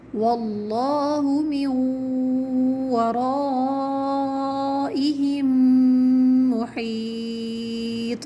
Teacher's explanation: تو لفظ اللہ کو ہمیں موٹا پڑھنا ہے